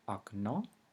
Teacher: It is pronounced a shorter and fainter A at the beginning of a word